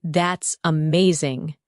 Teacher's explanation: When you say that's amazing, your tone rises with excitement. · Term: intonation